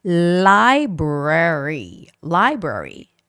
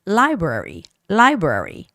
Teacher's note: this is another tricky word because there's the L and the R sound together. So it's got to be library. Library. The stress is on I.